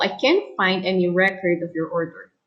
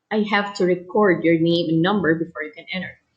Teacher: record is noun the stress is on the first syllable and record is used as a verb so the stress is on the second syllable